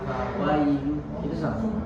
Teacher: Nah, ini lin, ya, lin itu mengalir dengan mudah suaranya. Jadi cara bacanya jangan seperti ada pertambahan hamzahnya.